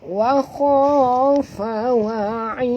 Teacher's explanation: bila kita berhenti sini kita matikan huruf dal ni, maka dia menjadi qalqalah kubra. Lantunannya agak kuat ya.